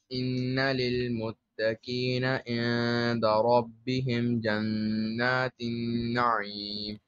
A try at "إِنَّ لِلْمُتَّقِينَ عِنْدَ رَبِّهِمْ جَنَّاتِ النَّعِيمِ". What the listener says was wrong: Again, apply غنى properly.